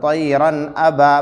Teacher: طیراً ا، با الف زبر با، الف سے پہلے زبر ہے، الف مدہ ہوگا، تھوڑا کھینچ کر پڑھے